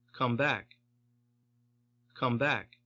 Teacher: Primary stress is on the adverb.